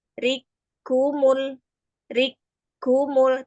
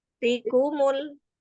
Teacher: ditahan dulu di kaf yang pertama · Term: tasdid